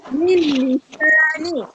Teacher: Kita masukkan nun tu, kita tak payah sebut nun, kita sebut lam tu. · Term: idgham